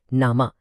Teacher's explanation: نامہ میں ہاں لکھی تو جاتی ہے لیکن اس کی اپنی بھاری آواز بالکل خاموش رہتی ہے۔ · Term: ہائے غیر ملفوظی